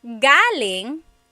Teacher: galing the emphasis is on the first syllable that means coming from.